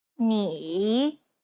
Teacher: it's the most unique tone out of all the tones because the pitch dips and then Rises knee imagine a ball bouncing on the ground as you make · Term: third tone